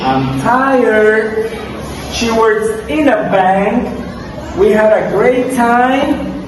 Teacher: the tone drops at the end to show that the idea is closed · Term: falling ination